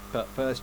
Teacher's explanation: but first but first এখানে এটা বলেনি, but first কেন বললো, কারণ এখানে টি হয়েছে শব্দের শেষে এবং পরবর্তী শব্দ শুরু হয়েছে কি দিয়ে, কনসোনান্ট দিয়ে। এ কারণে টি কি হয়ে গিয়েছে, সাইলেন্ট হয়ে গিয়েছে।